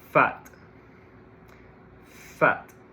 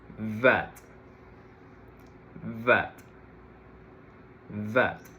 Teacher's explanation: Fat, no vibration. And in the case of vat, I need to produce vibration in my vocal cords.